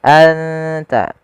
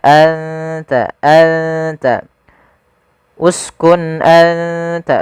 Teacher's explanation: suara nunnya disamarkan ke huruf ta an ta dan makhraj daripada huruf ta sendiri makhrajnya adalah ujung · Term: ikhfa